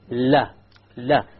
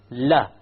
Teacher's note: And this is the letter lam. So the letter lam or la originates from the front edge and not the tip. There's a difference.